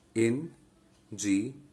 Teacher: double ER is one of the suffixes, so the stress will be on near.